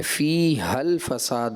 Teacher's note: ہاں کو ایسا لگا آپ حذف کر گئے، فِيهَا الْفَسَادِ ہوگا، واضح کرنا چاہیے تھا ہاں کو